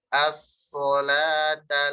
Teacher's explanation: lamnya tipis sodnya tebal